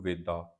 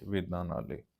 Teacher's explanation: ਵੇਦਾਂ, ਇਹਨੂੰ ਵੇਦਾ ਇੱਦਾਂ ਨਹੀਂ ਪੜ੍ਹਨਾ, ਵੇਦਾਂ, ਚਾਰ ਵੇਦਾਂ ਦੀ ਗੱਲ ਹੋ ਰਹੀ ਆ, ਇਸ ਲਈ ਆਪਾਂ ਉਚਾਰਨ ਇਸ ਦਾ ਨਾਸਕੀ ਕਰਾਂਗੇ